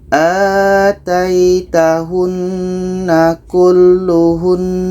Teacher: ada nun tasydid. Kalau berhenti tetap kita dengungkan.